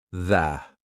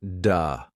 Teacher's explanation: Your tongue has to come through your teeth. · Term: th sound